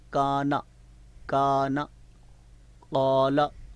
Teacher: نون کی جو خالی حرکت ہے اس کی زبر کو ہم لمبا نہیں پڑھ رہے، شارٹ پڑھ رہے ہیں۔ تو اب اس میں اگر تبدیلی آ جائے، یعنی کا کو آپ کم آواز سے پڑھیں، نون کو آپ زیادہ آواز سے پڑھ دیں، تو اس طرح لفظ بدل جائے گا۔